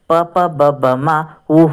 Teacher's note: ಇನ್ನು ಓಷಾಕ್ಷರಗಳು ಅಂತಂದರೆ, ಓಷ್ಯ ಅಂದರೆ ತುಟಿಯ ಸಹಾಯದಿಂದ ಹುಟ್ಟುವಂಥ ಅಕ್ಷರಗಳು ಓಷಾಕ್ಷರಗಳು. ಪ ಪ ಬ ಬ ಮ ಹೂ ಅನ್ನುವಂತಹ ಅಕ್ಷರಗಳನ್ನ ಓಷಾಕ್ಷರಗಳು ಅಂತ ಹೇಳ್ತೀವಿ.